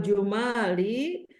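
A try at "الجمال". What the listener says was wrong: Jamali. Jamali bukan Jima, bukan Jumali. Jamali.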